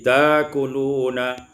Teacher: Pada ayat yang ke-49 ta'kuluna menjadi ibdalul hamzati alifan, ditukar hamzah dengan alif menjadi takuluna.